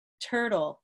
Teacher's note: it's what we call aspirated, or it has a puff of air coming from it